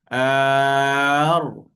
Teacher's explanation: Ra di sini hujung lidah kita menyentuh lelangit atas. Dia pergi dekat sini. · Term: huruf ra